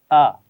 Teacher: اور اس کی آواز باریک ہے، آ نہیں پڑھنا، موٹا نہیں کرنا ہے اس کو · یعنی گلے کے شروع والے حصے سے جو سینے کی طرف ہے، یہاں سے اس کی آواز ادا ہوگی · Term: حمزہ, حمزہ کی آواز